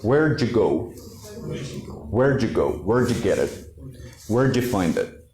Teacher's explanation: d with you with the y how do we link it we turn the first sound which is d into j · We turn the first sound, which is D, into J, okay? And almost the Y drops completely. It's not even pronounced. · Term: connection